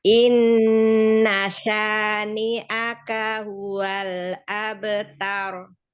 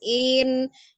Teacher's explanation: Inna langsung ditasdidkan ke nunnya. Bukan in. Inna syani'aka huwal abtar.